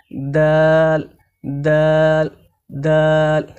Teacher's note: দাল হরফকে জিহবার আগা উপরের দন্ত তালুর সঙ্গে লাগিয়ে উচ্চারণ করতে হয়